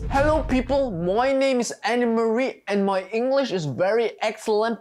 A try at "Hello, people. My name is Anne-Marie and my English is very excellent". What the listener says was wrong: Okay, aber wieso musst du alles so komisch betonen?